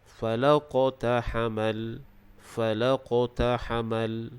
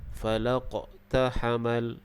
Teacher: Dan huruf qaf ini dia berada di pertengahan kalimah ataupun ayat. Hukum bacaannya adalah qalqalah sughra. Jadi cara bacaannya kita hendaklah melantunkan huruf qaf tersebut.